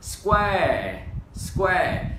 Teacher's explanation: chữ R mình hơi uốn lên vào một chút nào